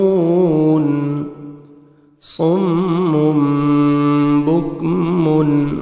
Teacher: تنوین کے بعد با آ رہا ہے تو تنوین کے نون کو آپ نے میم میں چینج کرنا ہے، جس کو اقلاب بولتے ہیں.